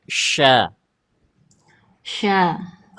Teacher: Dia bukan pakai bibir, Dia lidah tengah aja.